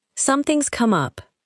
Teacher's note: Notice that something has becomes something's.